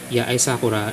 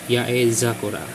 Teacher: So the dakten form for the sakura is the S becomes Z.